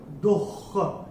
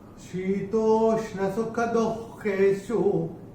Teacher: अभी तीसरे चरण में ये जो दुख जो आ रहा है ना, वो जो विसर्ग दुख के साथ है, वो विसर्ग का उच्चारण आधा ख।